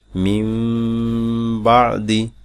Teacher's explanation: নুন সাকিন কে মিম দ্বারা বদল পড়তে হবে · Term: ইকলাব